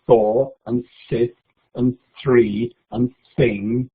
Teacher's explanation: you can't really hear me say this because it's an unvoiced sound and very quiet.